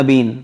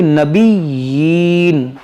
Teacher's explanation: ان الذین یکفرون بآیات اللہ ویقتلون النبیین۔ دیکھیں یہاں پر بھی نون مشدد ہے، اس میں غنہ کریں گے، اور یہاں یا پر کھڑی زیر ہے، اس کو کھینچیں گے۔